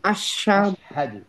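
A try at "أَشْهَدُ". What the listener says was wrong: আশহাদু, আশহাদু। হ্যাঁ, আশহাদু আমরা বলি না, আশহাদু, সাধু না, কিন্তু আশহাদু। ওখানে একটা হা আছে, বড় হা আছে, আশহাদু।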